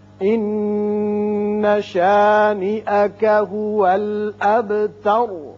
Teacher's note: ان نون مشدد ہے، غنہ ہوگا.